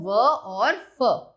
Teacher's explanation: निचले होठ व ऊपरी दांतों से ये निकलते हैं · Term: दंतोष्ठ्य